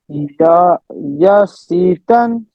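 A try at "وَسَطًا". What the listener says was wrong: Wow, fatha, wa. Wasatan. Yeah, it would be wasi if there is kasra below it. Wasi. There is fatha. So wasa, wasatan.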